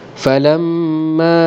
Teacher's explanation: Falamma ma dibaca dengan 4 harakat ataupun 5 harakat, iaitulah hukum mad jaiz munfasil kerana pertemuan huruf alif mad dengan hamzah dalam 2 perkataan.